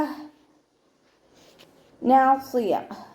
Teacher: ഇവിടെ സ്വാദ് ഇസ്തിഅലാൻ്റെ ലെറ്ററാണ്, നല്ലോണം ഉയർത്തിയിട്ട് ഉച്ചരിക്കുക.